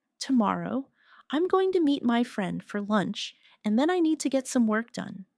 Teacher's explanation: Stress tomorrow. Meet friend, lunch, and work. The other words should be softer and faster. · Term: natural rhythm of English